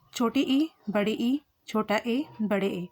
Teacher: ये जीवा के अग्र भाग से बोले गए हैं।